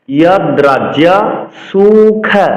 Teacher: সু দন্তস্বকে এস এর মতো উচ্চারণ করতে হবে। খ মহাপ্রাণ।